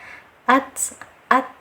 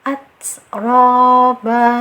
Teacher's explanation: ta ini masuk ke dalam huruf hamas, adanya aliran nafas. Nah, jadi setelah disyiddahkan, ditahan, baru kita beri angin ya.